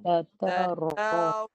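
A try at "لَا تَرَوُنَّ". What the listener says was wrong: Itu punya muncung. Itu Taiwan punya bunyi dia lain. Kalau ori punya bunyi, guna lidah. Lidah je naik. Lidah saja. Mulut lebar. Lidah. Lidah hujung belakang.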